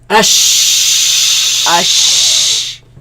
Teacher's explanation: They come from the middle of the tongue against the middle of the upper palate. So let's put Hamza before them, ad sound before them.